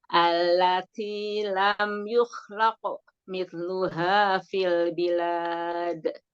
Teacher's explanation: Kembali ke ko ya Ustazah ya. Iya, kan qaf qalqalah, qaf sukun kan qalqalah, pantulkan.